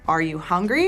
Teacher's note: You can hear how my voice goes up. · for yes or no questions in American English, we tend to have a rising intonation at the end of the question